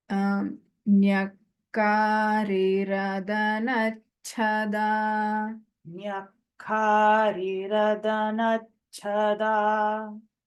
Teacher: Here there are two kakaras, so the emphasis needs to be there on the kakara and the alpaprana cha and mahaprana cha. So there also a little more effort needs to be put.